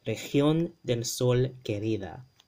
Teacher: that G makes a h, right? The guttural h